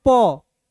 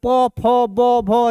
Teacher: जब तक दोनों होंठ नहीं सटेगा तब तक उच्चारण नहीं कर सकते हो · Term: ओष्ठ